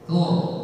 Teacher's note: Itu ra tafkhim maka bibirnya maju.